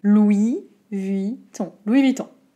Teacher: Et on n'entend pas de N. Le N est écrit, oui, mais on l'entend pas, désolé.